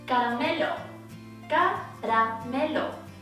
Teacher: The tongue does a mini tap against the palate here. Ra, ra, ra. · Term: soft R